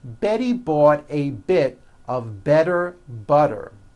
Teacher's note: all the T's are pronounced as D's because they fall between vowels.